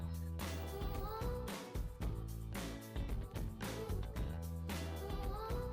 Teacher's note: fonema surdo, porque não vibra as cordas vocais, tá? Coloca a mão para você ver que, embora não vibre as cordas vocais, sai um ventinho, ó.